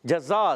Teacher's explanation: اچھا یہاں پر جزا میں جیم کا مخرج زبان کا درمیان اور تالو کا درمیان. ٹھیک ہے، جزا زا سیٹی والے حروف میں سے سیٹی کے ساتھ ادا کریں گے.